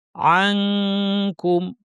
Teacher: নুন সাকিন কাফ, কাফের মাখরাজে জিহ্বা লাগিয়ে দিব, নাক থেকে গুন্না করব। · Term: ইখফা